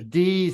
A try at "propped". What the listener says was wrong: It's a T sound, propped, propped.